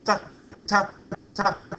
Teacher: That means that I'm speaking, and then I close those vocal cords. I close the glottis, close it off really quickly. That produces a glottal stop.